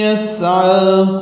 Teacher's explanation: یسعا سین ساکن پہ ہمس ہے. عین کو 2 حرکات لمبا کریں گے، عاوز حلق سے نکالیں گے.